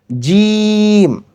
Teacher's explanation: সাউন্ডের মাঝখানে আমি তিন লিখেছি। তিন লিখেছি এজন্য বোঝানোর জন্য যে এই জিম উচ্চারণের সময় মাঝখানে তিন আলিফ পরিমাণ টানতে হবে